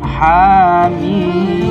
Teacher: Ha dengan panjang 2 harokat dan Mim dengan panjang 3 alif 6 harokat